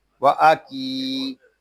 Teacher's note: یہاں کاف کو ہم ایک الف تک کھینچ کر پڑھیں گے